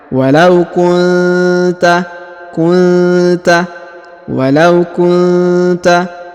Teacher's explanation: Nun sukun bertemu ta, maka didengungkan dan disamarkan.